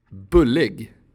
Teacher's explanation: The short form of u sounds like [ɵ].